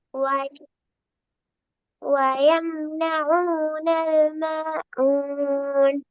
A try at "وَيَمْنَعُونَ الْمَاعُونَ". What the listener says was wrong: ம ஊன் அந்த கெப் வரக்கூடாது. இப்ப பாருங்க, வயம்னஊனல் என்ன செஞ்சீங்க நூனோட ஆயின. நூறு மாயினும் சேர்த்து அந்த இடத்துல கெப்பன் வந்துச்சுதா வயம்ன ஊனல் என்ற ஓதின ஆனா அங்க எப்படி ஓதின? ஆ ம ஊன் பிரிச்சீங்கடா அது அலிஃப் தான். நான் சொன்னமே முன்னாடி பார் எழுத்து இருந்து தெளிவாக பிரிச்சு வெளிப்படுத்தப்பட்டு ஓதுற ஒரே எழுத்து எந்த எழுத்து? அலிஃப் மட்டும்தான். அலிஃப்ட பாடத்துல ஒரு நோட் ஒன்றிக்கும். அலிஃப்ங்கிறது அதுக்கு முன்னால வர எழுத்திலிருந்து தெளிவாக பிரிபட்டு வருவார் என்ற நோட் ஒன்றிக்கும்.